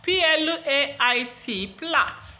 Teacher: L is a voiced alveolar lateral. So the voiceless bilabial plosive and the voiced alveolar lateral come together. Now this voiced alveolar lateral on its own is voiced, and P is voiceless. · Now this voiced alveolar lateral on its own is voiced, and P is voiceless. Okay, but when P and L come together, the L loses its voice nature and becomes voiceless. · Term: devoicing